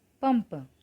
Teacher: इस शब्द में अनुस्वार के बाद आने वाला व्यंजन प है और प वर्ग का ही व्यंजन है, इसलिए इसमें प वर्ग के पंचमाक्षर म का प्रयोग हुआ।